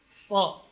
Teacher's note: Ujung lidah ini berada di gigi bawah, sementara gigi seri atas dan bawah rapat.